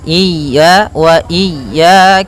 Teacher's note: Pada lafal ya ada mad thabi'i yaitu berupa fathah bertemu alif panjangnya dua harakat